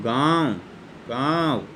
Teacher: अगर हम गाँव को बोलेंगे तो नाक से तो हम कम हवा निकालेंगे, मुंह से हमारे ज़्यादा हवा निकलेगी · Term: अनुनासिक वर्ण